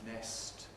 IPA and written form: nest (nest)